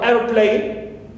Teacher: airplane, so air receives the primary stress here. Clear? Airplane, and of course second parts here receive secondary stress.